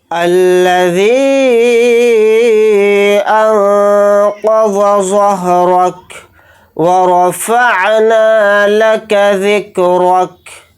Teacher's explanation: کاف کو ساکن کر کے پڑھیں گے حالت وقف میں